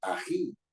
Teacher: me doy cuenta de que tiene la mayor fuerza de voz en ji, que es la final, ¿no? La sílaba final, la última sílaba. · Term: palabras agudas